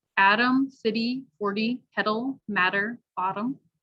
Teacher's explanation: the flap t which sounds like a d